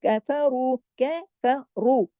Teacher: कैफरू, सिर्फ रू मोटा पड़ा जाएगा, कैफ, ये दोनों बारीक, इसको कफ और रू नहीं करना, मोटा नहीं कर देना।